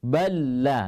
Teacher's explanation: Langsung melebur lam pertama ke dalam lam yang kedua. Ya. Di sini juga disebut dengan idgham kamil.